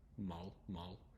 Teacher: it's a little bit of a softer L at the end